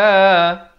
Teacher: ha pedas. Makhrajnya di pertengahan kerongkong